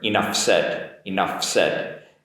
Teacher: it's possible to make that f and transition into an s quite easily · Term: linking